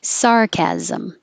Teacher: anytime you have an SM at the end of a word, it's really zim, sarcasm. So all together, nobody understands sarcasm anymore.